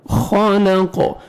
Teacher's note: خا کو موٹا کر کے پڑھنا ہے, قاف کو موٹا کرنا ہے, اور جب وقف کریں گے ساکن کریں گے قاف کو, لام زبر قاف جزم لق, اور قاف پہ قلقلہ کریں گے, ڈبل ساؤنڈ آئے گا.